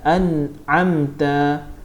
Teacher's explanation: Jadi kita pun dah belajar izhar halqi ni bacaan dia jelas dan terang dan jelas tanpa dengung